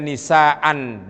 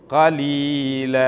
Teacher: Mestinya nisaan dibaca fathatain, kalau kita berhentikan menjadi nisaa. Qalilan kalau kita berhentikan menjadi qalila. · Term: mad iwad